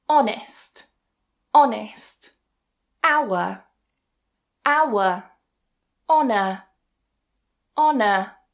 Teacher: So starting with the first rule, when we have a word that begins with H, but the origin is French or Old French, we tend not to pronounce that H as a h sound. We just remove it completely.